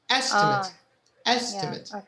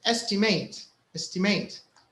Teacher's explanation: when it's a noun the stress is on the E estimate estimate but the other one is estimate estimate so it's on the mate · How can you differ it from the verb, estimate? Here, when it's a noun, the stress is on the E.